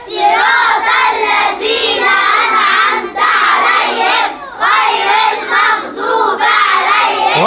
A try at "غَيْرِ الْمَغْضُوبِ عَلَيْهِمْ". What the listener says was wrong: غير المغضوب، لا لا اكسر الباء، غير